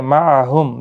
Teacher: معہم میم ساکن کے بعد ہا اظہار شفوی ہوگا